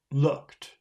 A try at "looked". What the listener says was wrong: Look. Looked. Looked. Okay, don't forget the T sound at the end of the word. Looked.